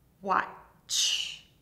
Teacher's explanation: This is a combination of two sounds, t and sh. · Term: CH sound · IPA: wɒtʃ